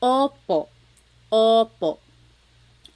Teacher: Sometimes I think of it like having a ball in your mouth. Your tongue gets kind of pushed back and down a little bit and the inside of your mouth is open and wide. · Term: letter O